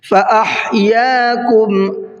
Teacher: فَأَحْيَاكُمْ، ہا کو حلق سے نکالنا ہے۔